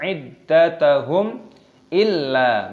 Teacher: mim sukun bertemu dengan alif, dibaca idhar syafawi, dibaca jelas. Iddatahum illa, lam alif dibaca panjang, ada tasdidnya, ditekan, dimasukkan.